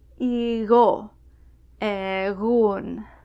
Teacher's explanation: Between vowels, it's a very soft G. You kind of have to pronounce G without touching the top of your tongue to the back of your mouth. Igo, egun. However, you will find that G often disappears entirely between vowels.